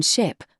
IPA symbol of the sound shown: ʃ